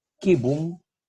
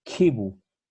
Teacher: En latín, esta consonante es velar, velar. Pero como le sigue una I, o puede ser también una E, esta consonante se ciñe, se adelanta en su articulación